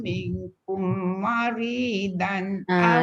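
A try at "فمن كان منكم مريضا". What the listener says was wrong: Kat situ dengung. Minkum maridon.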